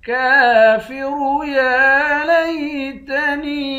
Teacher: کاف پر کھڑا زبر ہے، 1 الف کے مقدار کھینچ کر پڑھیں گے، را کو موٹا پڑھیں گے۔ یا پر کھڑا زبر ہے، اس کو بھی 1 الف کے مقدار کھینچ کر پڑھیں گے۔